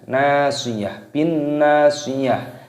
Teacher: Taknya di sini tak marbutoh, ketika waqaf berhenti maka dimatikan, taknya berubah menjadi huruf H · dibaca dengung terlebih dahulu karena nun tasdid, lalu nunnya ini dibaca panjang, ada tanda alifnya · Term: gunnah